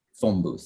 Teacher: if you put the two words together you get phone booth the n becomes an m